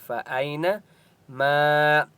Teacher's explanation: فَأَيْنَمَا الف مدہ ہے، میم کو ایک الف کی مقدار کھینچ کر پڑھیں گے۔